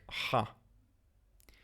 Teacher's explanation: Chet is another pharyngeal consonant, just like Ayin. It's pronounced slightly differently in modern Hebrew versus biblical Hebrew.